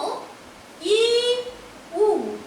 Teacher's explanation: ই উ এগুলো উচ্চারিত হয় ওপরের দিকে, তাই এটা এই দুটো হচ্ছে উচ্চ স্বরধ্বনি